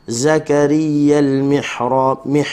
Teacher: huruf ha halkum tengah, keluarkan angin dan suara.